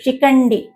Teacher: ఖ అనేది మహాప్రాణాక్షరం దాని తర్వాతనే సంయుక్తాక్షరం ఉంది